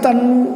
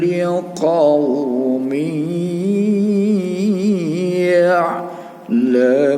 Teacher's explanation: Nah, ini harus berdengung karena ini kasrotain atau tanwin kasroh, ya. Baris tanwin ini baris 2 ini ketemu sama ya. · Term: idgham bi gunnah